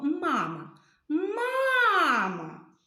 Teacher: наголос падає на перший звук а тому що ми цей звук найбільше виділяємо голосом